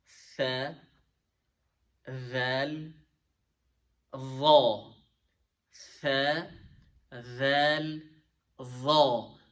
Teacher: So if you notice, pronouncing all these three letters, our tongue should be between the teeth. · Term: tongue between teeth letters